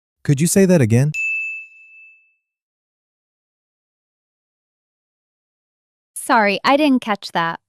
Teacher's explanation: say them with a polite, rising tone at the end.